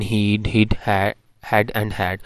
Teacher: they are called they are called front vowels so actually in the highest point of the tongue is in front of the mouth